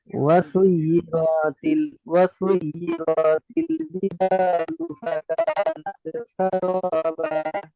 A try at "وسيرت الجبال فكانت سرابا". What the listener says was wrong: সৈয়িরতি বলে র কে টান দিয়েছেন, র টান দেওয়া যাবে না, র এর উপর কি আছে? র এর উপর কি আছে? জাবার আছে, হারাকাত, তাই না? ওয়াসুয়্যিরাতিল জিবালু ফাকানাত সারাবা।